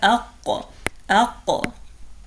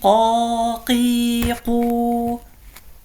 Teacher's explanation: So over here, this part of the roof of the mouth, so this is like this bony part, we call this the hard palate, and this part where there's like meat, we call this the soft palate. Okay, so harf al-qaf comes out from the back of the tongue with the soft palate